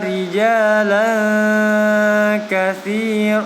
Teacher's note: Huruf kaf termasuk hurufnya ikhfa, maka dibaca dengung yang lama